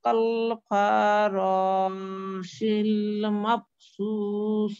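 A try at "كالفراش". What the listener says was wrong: কাল ফারা, ফাতে একটু মাদ হয়ে গেছে, রতে মাদটা বেশি হয়ে গেছে।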